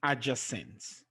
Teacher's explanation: for adjacent the stress is on the second syllable